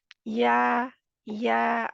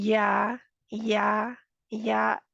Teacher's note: तालू की तरफ उठा हुआ है तालू के साथ जुड़ा नहीं हुआ तालू के बिल्कुल करीब पहुंचा हुआ है लेकिन उससे जुड़ा नहीं है · या के लिए हमारी जुबान का बिल्कुल दरमियानी हिस्सा ऊपर उठ रहा है और क्या हो रहा है जाके तालू के साथ जोड़ नहीं रहा तालू की तरफ उठा हुआ है तालू के साथ जुड़ा नहीं